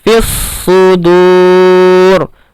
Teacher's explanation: Nah, di sini fis sudur, di sini alif lam syamsiyah. Fi langsung melebur ke shad, bukan ke lam, karena dia alif lam syamsiyah.